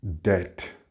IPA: det